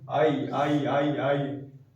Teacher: जब आ और दीर्घ ई, इकार को एक साथ मिलाकर बोलने का प्रयास करेंगे, आई आई आई आई, तो आई का उच्चारण निकलने लगता है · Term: संध्याक्षर